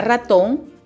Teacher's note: La mayor fuerza de voz está en la sílaba ton.